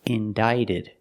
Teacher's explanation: In the past, indicted. The C is silent, so that makes the T between vowels, so it changes to a fast D.